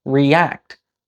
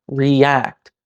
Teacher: My jaw only goes down once, but it's still clearly two syllables.